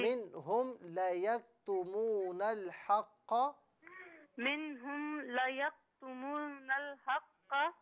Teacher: منہم میں میم ساکن جو ہے نا اس پر غنہ نہیں کیجیے